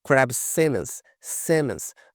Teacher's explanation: Note que esse O aqui tem um som mais puxado para o E, né? É um som bem diferente mesmo que tem essa letra dentro desse nome aqui.